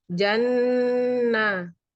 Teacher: Gunnah karena ada huruf nun yang ditasjid, membacanya didengungkan kira-kira 3 harokat, dan mat asli karena ada huruf ya di kasroh, panjangnya adalah 1 alif atau 2 harokat.